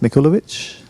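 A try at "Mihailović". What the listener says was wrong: Mihailovich. The K is silent. Simon Mihailovich.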